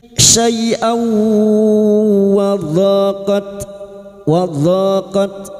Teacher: Syai'aw fathah tanwin pada huruf hamzah ini bertemu wawu idgham bi gunnah masuk dengan mendengung, masuk pada huruf wawu dan mendengung selama 3 harokat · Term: idgham bighunah